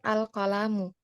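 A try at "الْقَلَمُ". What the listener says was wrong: Saya dengarnya panjang ya? Serius, saya dengarnya panjang. Al-qalamu.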